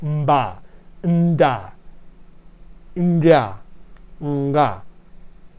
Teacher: And here we have an extra series which has very African sounds, very popular in many areas of Africa, where you have this pre-nasalized. So here we have a nasal before the stop